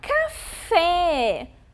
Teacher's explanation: café a sílaba fé é mais forte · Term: sílaba tônica